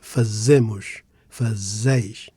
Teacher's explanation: we emphasize ze in fazemos and fazeis and fa in fazem